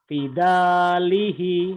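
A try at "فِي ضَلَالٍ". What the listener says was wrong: Itu sod Bapak. Sod. Sod. Salat.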